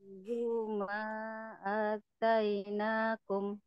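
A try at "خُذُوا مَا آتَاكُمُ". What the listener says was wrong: Maknya kurang panjang Bu. Lihat, alis. A-nya 2 harakat. Khudzu ma atainakum.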